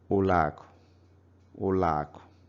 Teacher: when they come together, A forces O to become another A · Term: vowel assimilation